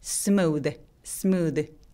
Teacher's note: 마지막에 오는 th인데 울림이 생겨요